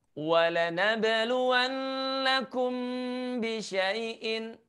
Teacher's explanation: mim bertemu dengan huruf ba yang juga harus kita baca dengan cara mendengungkannya. Menahan suaranya selama 2 harokat